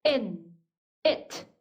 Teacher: 굉장히 short, 짧습니다. 그리고 소리가 굳이 또렷하게 입모양을 잡아당겨주지 않기 때문에 우리말 E 소리보다는 좀 더 어둡고 좀 덜 분명하죠.